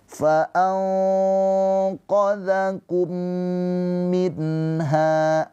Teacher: nun sukun bertemu dengan huruf ha. Ini izhar halqi ya. Nunnya dibaca dengan jelas. H-nya panjang dua harakat.